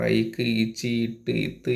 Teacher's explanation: வல்லின மெய் எழுத்து வந்து மார்புல இருந்து ஒலிக்கும் மெல்லின எழுத்து பார்த்தீங்கன்னா வல்லின எழுத்து எங்க இருந்து ஒலிக்குது மார்புல இருந்து ஒலிக்கும்